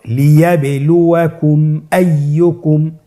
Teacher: মিম সাকিনকে স্পষ্ট করে গুণনা ছাড়া পড়তে হবে। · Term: ইজহারে শাফাউই